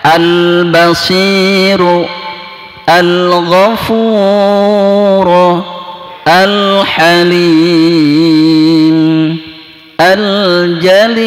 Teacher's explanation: Tapi alif lam qamariyah maka alif lamnya dibaca jelas, ya.